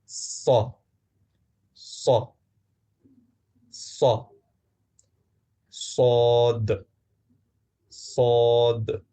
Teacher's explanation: اگلا حرف جو تھوڑا سا مشکل ہے، وہ ایک ایسا حرف ہے جو سننے میں بالکل سین جیسا لگتا ہے، لیکن یہ بالکل الگ ہے، اور وہ ہے صاد۔ صاد کو ہم سین کی زیادہ بھاری آواز کہہ سکتے ہیں۔ یہ سا جیسا نہیں، بلکہ صا، صاد کافی بھاری ہوتا ہے۔